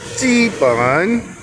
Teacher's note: G is in the first tone and bun in the third